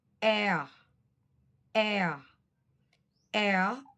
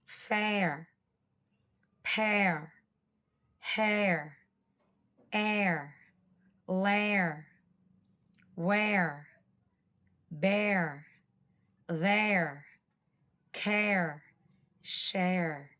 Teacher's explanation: To make this sound, first say eh. Then move your tongue backwards and close your mouth a bit to say ah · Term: diphthong